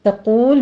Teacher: غیر الذی میں غین پر ہے، آگے یا لین ادا کریں گے، الذی میں دال کو نرمی سے پڑھتے ہوئے یا مد ادا کریں گے، اور تقول میں تا کو باریک رکھنا ہے، قوف کو پر پڑھتے ہوئے